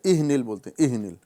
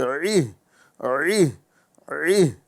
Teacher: یہاں پر اکثر لوگ غلطی کر دیتے ہیں کہ عین کی جگہ حمزہ ادا کریں